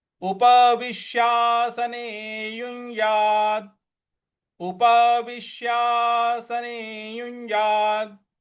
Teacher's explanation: उपविश्यासने युञ्यात्। यहाँ पे विश विश यहाँ पे हमको आघात देना है